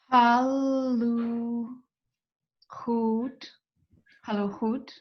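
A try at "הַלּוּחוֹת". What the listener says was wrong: Haluchot. And the cholam, I want the top, the dot at the top left of the lamed, make more of an O sound.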